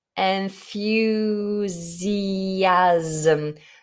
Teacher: Notice the S is pronounced like a Z.